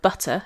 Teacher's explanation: it can be a tap like how an American English speaker would say in the middle of the word butter if they were talking fast